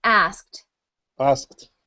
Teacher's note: it into a past tense verb we don't say ask it we say ask with a tiny T sound at the end